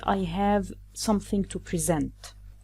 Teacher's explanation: when we stress the second syllable SENT, it gives the verb form